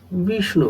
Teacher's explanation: विष्णु में हम देखते हैं कि श और ण संयुक्त अक्षर। इस शब्द में वी पर बलाघात है